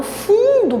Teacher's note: quando eu falo fundo, por exemplo, eu estou nasalizando esse U.